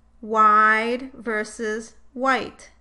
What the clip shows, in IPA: aɪ vs a̝ɪ